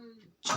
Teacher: छ जो है अघोष महाप्राण वर्ण है